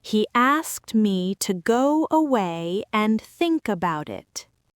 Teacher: The Y sound naturally appeared between away and and. The K in think automatically jumped onto about and the T in about automatically jumped onto it. · She just kept the air flowing. Because she kept the air flowing, the W sound naturally appeared between go and away. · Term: connected speech